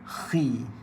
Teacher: bila dia baris bawah seakan-akan huruf tipis, tebalnya sangat lemah